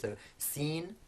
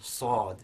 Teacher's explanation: So whereas sin is quite light, we have sad, which is heavier, and the way that heaviness is produced is that the front of the tongue is in contact with the same point of the mouth in both sin and sad, but for the sad that contact is harder, and also the back of the tongue is raised. So sin and sad, sin and sad.